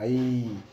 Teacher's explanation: ஐ சொல்லி பாருங்க ஈல முடியும்